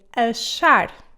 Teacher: When it comes before an H, it will sound like a sh, like in achar.